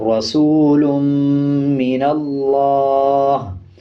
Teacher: ہا کے نیچے زیر ہے، جب وقف کریں گے تو زیر کو سائلنٹ کر دیں گے اور ہا کی آواز کو آدھا پڑھیں گے